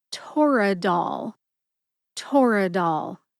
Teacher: Put all 3 syllables together and you get Toradol. Emphasize TOR and DOL. TOR gets the most emphasis.